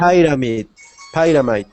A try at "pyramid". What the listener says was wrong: That is pronounced pyramid. Pyramid. Pyramid. Again with those R's, try to get them to stop rolling.